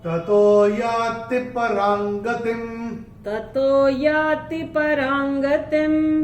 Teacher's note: तो ये जो र के ऊपर जो अनुस्वार आ रहा है उसके बाद का अक्षर है ग और अनुस्वार के बाद जब ग आएगा तो अनुस्वार का उच्चारण होगा अंग।